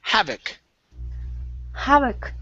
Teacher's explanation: our stress is at the very beginning